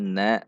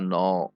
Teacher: Maka perhatikan di sini na masih tipis. Na tidak dibaca no, tapi na tipis. Na masuk ke shad yang tebal.